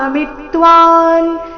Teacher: ಮಿ ರಸ್ವ ಅದರ ಮೇಲೆ ಆಘಾತ